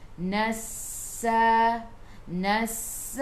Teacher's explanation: Sin sifat hurufnya safir, kena bunyikan nassa.